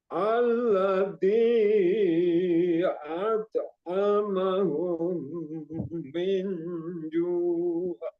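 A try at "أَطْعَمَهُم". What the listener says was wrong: Tetap dia to-nya tadi. Kalau dipraktekin khusus to, nah kalau dipraktekin khusus to itu bagus Pak, bisa. Tapi pas ketika dibaca jadi ate larinya ate, jadi kayak ringan, terlalu ringan pas dibaca. ato.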